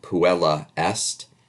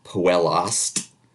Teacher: For some reason, the initial E of est often is the one that goes away.